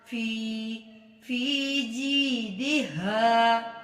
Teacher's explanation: 1 انگلی کے برابر یا 1 الف کے برابر لمبا کریں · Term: یا مدہ